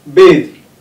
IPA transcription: beið